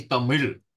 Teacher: In Tamil, for example, they don't actually say L. They say Tamil because it's a retroflex L.